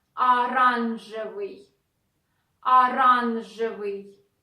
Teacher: O is not stressed. Pronounce it like a.